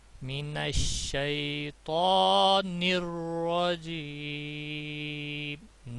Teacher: آواز میں پڑھا جاتا ہے، اس کے اوپر مد اصلی ہے، کھڑا زبر ہے، دو الف کے برابر یا دو انگلیاں کھولنے کے برابر اس کو کھینچا جائے گا